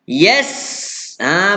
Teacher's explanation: Nak jelaskan huruf sin, dia ada bunyi tu bunyi desir tu.